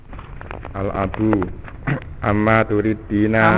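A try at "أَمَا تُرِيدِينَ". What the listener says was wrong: Ama, ya, jangan ditasdid.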